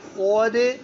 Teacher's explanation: صاد موٹا پڑھنا بچوں, اور دال پر قلقلہ